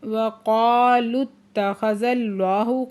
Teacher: وقالوا اتخذ اللہ، قاف پہ علی مدہ ہے، دو حرکت کھینچ کے پڑھیں گے، لام کو تا کے ساتھ ملا کے پڑھیں گے، تا مشدد ہے، سختی سے پڑھیں گے۔ اس میں جلالہ سے پہلے زبر ہے تو اس میں جلالہ کو پورا آواز سے پڑھیں گے۔ اللہ کے لام کے اوپر کھڑا زبر ہے، دو حرکت کھینچ کے پڑھیں گے، اور لام مشدد ہے، سختی سے بھی پڑھیں گے۔